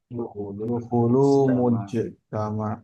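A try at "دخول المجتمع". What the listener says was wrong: Enggak pakai enggak pakai panjang dia.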